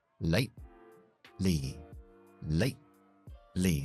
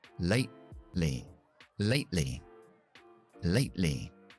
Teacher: lo que vamos a hacer es dejar esa primera T siempre en una parada glottal.